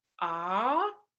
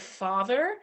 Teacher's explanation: For the vowel ah, as in the English word father, the tongue pulls backward to form an acoustic constriction in the oropharynx back there, and a relatively large space in the front of the mouth. It is therefore classified as a back open vowel.